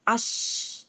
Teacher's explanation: നാവിന്റെ middle part എന്ത് ചെയ്യുന്നുണ്ട് അണ്ണാക്കിലേക്ക് ഉയരും അന്നേരം മിഡിലിൽ ഒരു ചെറിയ ഒരു ഗ്യാപ്പ് വരും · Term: തഫശി